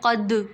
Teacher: اس پہ قلقلہ ہوگا، قاف پہ بھی اور دال پہ بھی